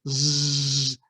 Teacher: a z interestingly enough isn't as blotchy because it's got voicing added to it so Z there's still some friction but the voicing creates and